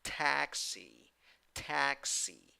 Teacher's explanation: two syllables the first syllable is the stressed syllable · The first syllable is the stressed syllable, and you have a in the first syllable, and the letter E with a hat, E, in the second syllable.